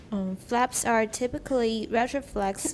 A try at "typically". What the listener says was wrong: Typically, don't pronounce the A. The A is not pronounced.